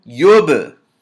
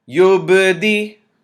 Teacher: This is ba sukoon, and we have to bounce the sound of the ba as well. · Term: qalqalah